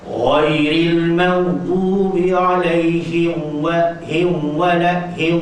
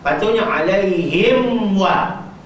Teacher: Mim dengan waw dia senang jadi idgham, padahal tu izhar. Alaihim wa la, tu jadi alaihim wa.